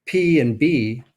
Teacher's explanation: are about making constrictions in the vocal tract so for example if you have a constriction that's made with both lips what you've made is something we call a bilabial sound